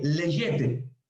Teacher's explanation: Cuando la gamma aparece en el medio, ya no suena como una G, sino más bien como una Y, usándola como Y, leyete.